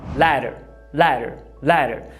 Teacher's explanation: Percebeu que o le é a sílaba tônica? É a sílaba forte?